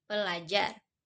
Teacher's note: fonem er pada morfem ber dan per menjadi l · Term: perubahan fonem